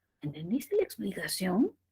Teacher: Siente cómo sube un poquito al final el tono. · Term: tono ascendente